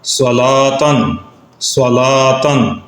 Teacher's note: علی، علی لام کو باریک پڑھا، صلاتن صلاتن، صاد کو موٹا پڑھ رہے ہیں اس لیے کہ یہ حروف مستعلیہ